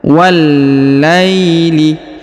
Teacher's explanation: Perhatikan huruf wa langsung disambung masuk ke huruf lam yang berharokat tasdid ya